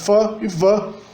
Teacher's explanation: E isso, na verdade, permite, ou pelo menos facilita, a produção de sons como F e V, que são os sons onde o lábio inferior se liga à arcada dentária dianteira superior